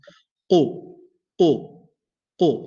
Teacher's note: It goes all the way up and touches the basically the light or the soft palate of the top of the mouth, right in the behind, the soft palate. So qaf, back of the tongue raises up, it touches the soft palate in the behind, inside the mouth.